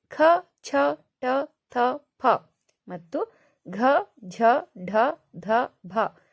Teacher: ನೋಡಿ ಉಚ್ಚರಿಸುವಾಗಲೇನೆ ಗೊತ್ತಾಗುತ್ತೆ ನಿಮಗೆ ಹೆಚ್ಚು ಉಸಿರಿನಿಂದ ಉಚ್ಚರಿಸುತ್ತೇವೆ ಅದಕ್ಕೆ ಇವನ್ನ ಮಹಾಪ್ರಾಣಾಕ್ಷರಗಳು ಅಂತ ಕರೀತೀವಿ